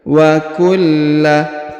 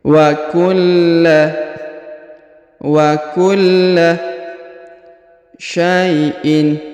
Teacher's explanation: Huruf La ditahan dan ditekan karena terdapat tanda tasdid